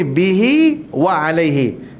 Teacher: Panjang. Tapi bihi wa alaihi, sambung dengan waw. Maka kita baca dengan dua harakat. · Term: mad silah qasirah